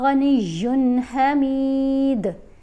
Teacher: دال کے اوپر کلکلا کریں گے